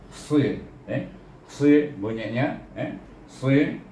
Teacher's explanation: Huruf sad adalah huruf isti'la dan safir.